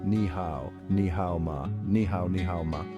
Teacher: ni hao ma is pronounced with a rising tone at the end, making it a question.